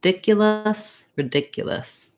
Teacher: to watch out for is that yeah sound and then just making sure that you have the rhythm correct and that your length is on that second syllable